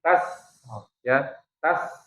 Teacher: tas dia punya sifat rohwa, punya desis, punya sifat juga hams ya. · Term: sin